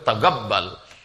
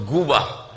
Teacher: Kalau orang Yaman, Qaf itu yang disebut G. Maka mereka sebut Tagabbal.